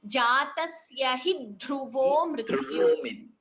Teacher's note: here a slight second dha is heard, so dvitvam jatasya hi dhruvo mrityuh, little stress.